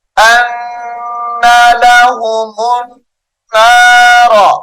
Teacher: نون مشدد کی وجہ سے غنہ کریں گے